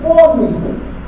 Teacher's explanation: Paroxítona. Ei, forte e fraca. Agora de tom decrescente.